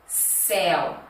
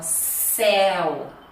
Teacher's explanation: Perceba que o céu, ó, eu abro mais a boca.